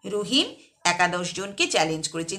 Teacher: রহিম একা 10 জনকে চ্যালেঞ্জ করেছে, যে একটা ছেদ বা দাঁড়ানো বিরাম। রহিম একা, এরপর একটা ছেদ, তারপর 10 জনকে চ্যালেঞ্জ করেছে